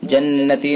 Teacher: نون حرف مشدد لہذا غنہ ہوگا